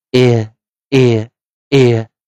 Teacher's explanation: 在念▁ear▁的时候，喉咙稍微是有点小紧缩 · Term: 双元音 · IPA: ɪə